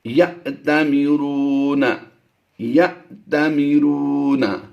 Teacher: اگر یہ جزم نہ ہوتی تو پھر یا تعمیرون ہوتا، لیکن یہاں پر جزم ہے تو اب اسے ہم حمزہ کے ساتھ پڑھیں گے. حمزہ ساکنہ جب بھی ہو وہاں پر جھٹکا دیا جاتا ہے